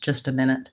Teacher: sometimes we will reduce the sound in just to sound a little bit more like gist